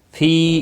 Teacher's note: فی قلوبہم مرض فزادہم اللہ مرضا۔ فی یا مدہ ہے، ایک الف کے برابر کھینچ کر پڑھیں گے